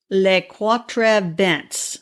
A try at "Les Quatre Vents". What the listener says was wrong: Don't pronounce the S's. They don't pronounce the S's on the back of words.